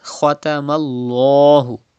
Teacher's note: You have to read with thick voice. And then there is zabar before the lam of Allah's name. So you have to read lam with thicker voice like this. Khatamallahu.